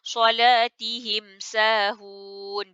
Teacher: Kita rapatkan kedua-dua bibir, ya. Sempurnakan bunyi mim. · bunyi mim mati disebut dengan jelas tanpa dengung. Matikan dengan sempurna. Sebab dia adalah izhar syafawi.